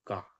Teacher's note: जब हम का बोलते है ना तो आवाज पीछे से आती है मुख के पीछे से आती है कंठ से आती है